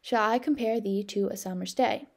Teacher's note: So shall is unstressed, I is stressed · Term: iambic pentameter